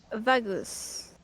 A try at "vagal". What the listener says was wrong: it's not pronounced whatever you're trying to pronounce it. There's no S. V-A-G-A-L. If there's an S in there, then that's very, very, very concerning.